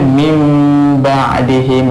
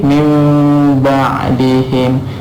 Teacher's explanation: Iklab ni bermaksud menukarkan, iaitu kita menukarkan nun mati ataupun tanwin kepada mim mati berserta dengan dengung.